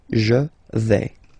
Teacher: Remember, final S not pronounced. Je vais.